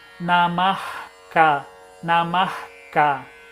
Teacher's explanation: Então você não tem som. Então o que a gente faz, a Visarga ela ganha o som de R. Aí sim, é como se a gente tivesse um R. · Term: Visarga som de R